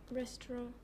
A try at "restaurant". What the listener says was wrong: The stress should be on the ending, not on resto. always hit the ending.